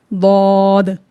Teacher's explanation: ज़बान का मोटा किनारा जब अंदरूनी जो दाढ़ें हैं उनसे टच करे तो हर्फ दौद अदा होता है